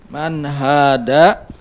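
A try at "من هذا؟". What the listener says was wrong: Bukan da, tapi za. Hadha. Hadha. Hadha. Ada zal, ada dal. Jangan salah, bukan hadha. Bukan hadha, tapi hadha.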